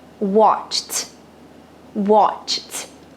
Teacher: adicionar um pouquinho mais de potência um pouquinho mais de ar Você pode até cortar mentalmente aí o Ed da palavra e colocar um t